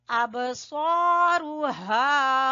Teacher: با کے اوپر قلقلہ ہو رہا ہے، ہلکا والا قلقلہ